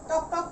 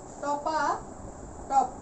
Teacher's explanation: অতিরিক্ত একটি আ স্বরধ্বনি নিয়ে আসায় শব্দটি কিন্তু শ্রুতি মধুর হয়েছে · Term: অসমীকরণ